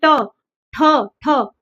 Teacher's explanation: वर्णों का उच्चारण करते वक्त जो हमारी जीभ होती है वो क्या होती है? पीछे मुड़कर क्या होती है? ऊपर लगती है। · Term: मूर्धन्य